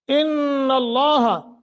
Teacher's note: اگر ملا کے پڑھیں گے پھر پڑھیں گے ان اللہ، نون مشدد ہے غنہ کر کے پڑھیں گے، لفظ اللہ کو موٹا کریں گے